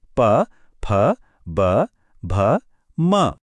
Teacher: इनको बोलने के लिए दोनों होठों का मिलना जरूरी है। जैसे प वर्ग की सभी ध्वनियां प फ ब भ म। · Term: ओष्ठय ध्वनियां, ओष्ठ्य ध्वनियां